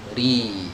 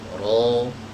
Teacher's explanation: Tapi kalau tipis, contohnya ro yang di kasroh, ri, lidah belakangnya rileks ya kan, kemudian tenggorokannya agak meluas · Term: ro yang tipis